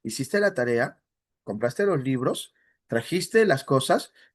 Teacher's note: entonación ascendente o tono ascendente, que normalmente se va a dar en las preguntas cuya respuesta va a ser sí o no. Hiciste la tarea, compraste los libros, trajiste las cosas, lo que se llamaba directa total.